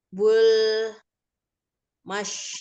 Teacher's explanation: Bul mash itu ada alif lam komariah, alif lamnya dibaca jelas.